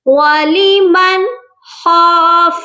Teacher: نون ساکن پر ہم اظہار حلقی کریں گے، یعنی ہم صرف نون کو ظاہر کریں گے، غنہ نہیں کریں گے۔ ولیمن خاف، خا کو موٹا کر کے پڑھا جائے گا۔